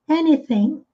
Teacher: Com relação à pronúncia, nós temos esse TH com som de S, com a pontinha da língua presa entre os dentes, e esse G que não é pronunciado no final